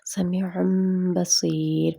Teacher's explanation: اب آگے آ گیا با، سمیع بصیر. ہم اس کو میم کی آواز دے دیں گے